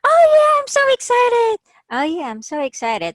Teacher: we use this ascending or rising intonation when we are happy or expressing positive emotion when we're enthusiastic when we're interested so using this going up